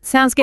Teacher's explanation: the reply sounds good with that falling intonation